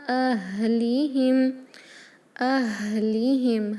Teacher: ہا بہت ہی پست آواز سے ہا نکلتا ہے کیونکہ ہمارے حلق کے آخری حصے سے ادا ہوتا ہے جو سینے کے قریب ہوتا ہے۔